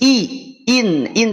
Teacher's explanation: ini Hamzah sifatnya apa istifal berarti ketika mengucapkan syaiin sudah mah Hamzah istifal kemudian harakatnya kasrah maka tipis betul-betul tipis I in in tidak in UN UN tapi I in in